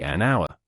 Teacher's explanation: The word hour starts with the letter H, which is a consonant. However, the H in hour is silent, and the word starts with the vowel sound though.